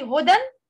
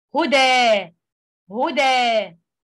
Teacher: substituting a lengthened alif for the tanween with a fatah when stopping on it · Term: substitute lengthening